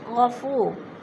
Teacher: جیسے ان اللہ غفور، وہ ساکن سے پہلے فا کے اوپر پیش ہے تو وہ مدہ ہو رہا ہے. وہ مدہ کو ایک الف دو حرکات کے برابر لمبا کر کے پڑھنا ہے